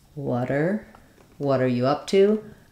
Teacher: We're linking what and are.